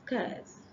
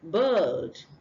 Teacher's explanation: the next sound is uh it's a long middle sound